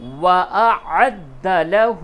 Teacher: دال کے اوپر تشدید ہے، عین کو دال سے سختی کے ساتھ ملائیں گے